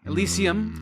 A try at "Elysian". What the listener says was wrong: Elysian with an N.